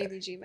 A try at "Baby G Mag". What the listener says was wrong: Baby G Mag. You said Meg.